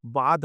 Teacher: ভটা ব হয়ে যাচ্ছে ভাতকে বাদ বলা হচ্ছে